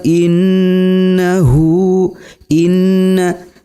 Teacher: terdapat hukum bacaan yaitu gunnah. Huruf nunnya harus didengungkan antara 2 sampai 3 harokat.